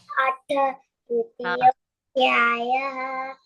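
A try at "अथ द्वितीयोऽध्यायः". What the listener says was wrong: So now one correction. Atha. Tha should come. Dvitiyodhyaya. Dha should come.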